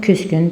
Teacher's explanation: Küs, kün sözündə söz ortasındakı qoşa samitlərdən iki müxtəlif kar samiti olduğuna görə tələffüz zamanı ikinci gələn cingiltili tələffüz olunacaq. Küs, kün yazılıb, küsgün deyiləcək.